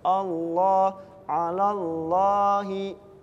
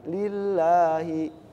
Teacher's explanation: kalau lafaz Allah itu yang tebal dibacanya Allah, alallahi. Kalau yang tipis walillah, bibirnya juga harus ditarik, lillahi. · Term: lam jalalah